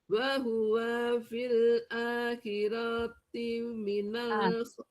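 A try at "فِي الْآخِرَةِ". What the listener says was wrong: Ro-nya fil akhirati ro pendek.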